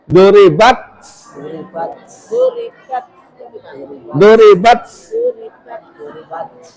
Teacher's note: Hames itu keluarnya angin dari tenggorokan keluar ya. Bukan mendesis.